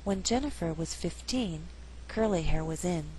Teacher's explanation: curly hair was in here we did not stress hair here 15 is at the end of a phrase so the second syllable is stressed · When Jennifer was 15, curly hair was in. Here we did not stress hair.